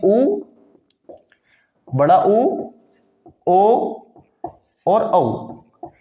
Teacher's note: वृत्त मुखी होते हैं तो वृत मुखी में चार होते हैं उ बड़ा उ ओ और औ ये चार स्वर ऐसे होते हैं जिनको बोलते हुए मुख जो है वो वृत के समान हो जाता है गोल हो जाता है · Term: वृत्तमुखी स्वर